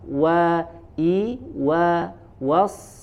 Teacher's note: Kemudian ada huruf waw lagi ya, ada huruf waw dimanyunkan terlebih dahulu, kemudian disempurnakan fathahnya.